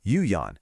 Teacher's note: the tricky third tone dip into a rising second tone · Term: 3rd tone dip